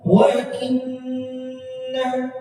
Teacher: Lama di sini ada wa inna, ada nun musyaddadah. Nun bertasydid dibaca dhammah dua harakat ditahan.